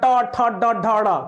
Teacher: मूर्धन्य में जीभ उलट जाती है